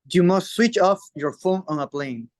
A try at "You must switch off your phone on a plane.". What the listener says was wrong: Your phone on a plane. Very good.